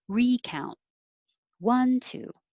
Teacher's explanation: stress on the first syllable, recount